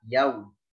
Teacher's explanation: Sempurnakan sifat lin pada yau, ya, jangan yo, ya, jangan yo, tapi yau